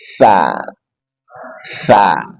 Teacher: ujung lidah dari arah permatasnya bertemu dengan ujung dua gigi seri atas